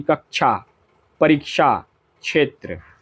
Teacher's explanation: यह यह संयुक्त संयुक्त वर्ण है व्यंजन है और छोटा छाता वाला छ तालव्य वर्ण है जैसे कि छात्र छत छड़ी जबकि ये क्षत्रिय छ कंठ और मूर्धन्य वर्ण है। इसमें हल्का क और मूर्धन्य स की मिलीजुली ध्वनि रहती है। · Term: संयुक्त व्यंजन